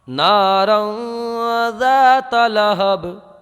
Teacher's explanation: ذاتہ مت پڑھیے، ذال کو باریک پڑھیے